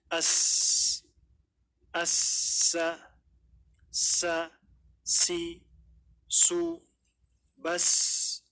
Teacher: Karena dari sisi sifat dia berbeda. Makhrajnya sama, ujung lidah mengarah ke ujung gigi seri bawah atau mengarah ke 2 gigi seri bawah.